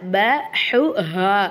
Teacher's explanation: இத வந்து ஹு அழகா சொல்லணும் ஹா நல்லா அடித்தொண்டையிலிருந்து சொல்லணும்